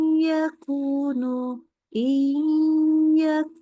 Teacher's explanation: Jadi nunnya udah kayak hampir hilang, tetapi karena dia ada nun, masukin ke hidung. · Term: gunnah